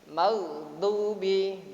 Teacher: Ghain termasuk huruf tafkhim, huruf yang dibaca tebal